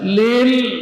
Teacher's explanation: Lil tetap mengalir sebagian dari suara karena lam termasuk huruf pertengahan antara syiddah dan rakhawah